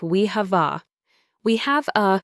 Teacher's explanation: The first three words we have e can blend together. The v sound at the end of have links smoothly to the e.